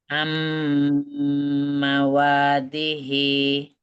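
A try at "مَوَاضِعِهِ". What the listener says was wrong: Di'ih. Bukan dihi. Di'ih.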